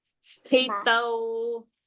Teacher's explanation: Sthi mahaprana. Tau alpa prana.